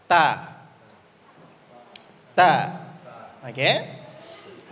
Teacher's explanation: tumbuh gigi seri atas jadi atas ya tepat di belakangnya jadi ujung lidah kita kena giginya dan kena juga dagingnya di belakang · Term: makhraj